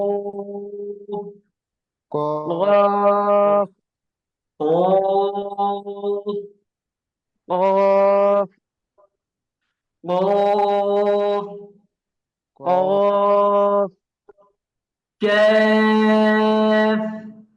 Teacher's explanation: এরপর জিহ্বার গোড়াতে আমরা যাবো, হ্যাঁ। জিহ্বার গোড়াতে হলো দুই হরফ, একটা একেবারে গোড়াতে, একটা তার সামনে।